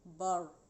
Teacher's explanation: را ساکن کو موٹا اس لیے پڑھیں گے کیونکہ اس سے پہلے زبر آ رہا ہے